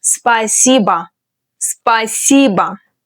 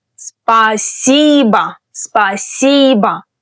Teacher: you might have noticed that the last O in this word sounds rather like ah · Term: vowel reduction